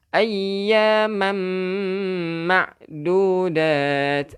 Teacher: Tanwin bertemu dengan mim. Jadi memasukkan dengan dengung. · Dia memasukkan beserta dengan bacaan bunyi mim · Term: idgham bi gunnah